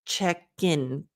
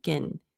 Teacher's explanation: So instead of check in, gin. By linking the k to the I in, you don't even have room to mispronounce or to add a syllable.